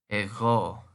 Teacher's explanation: note that the G in Greek is sort of a gargling sound. Ego.